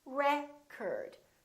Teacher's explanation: if it's a noun it's pronounced as record the first syllable is stressed